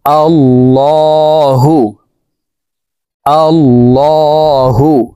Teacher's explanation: উচ্চারণ হয়ে যাবে। আল্লাহু এই লামকে ল বলে পড়তে হবে। কারণ আল্লাহ শব্দের আগের হারফে জবর হইলে এই লামকে ল অর্থাৎ মোটা করিয়া পড়িতে হয়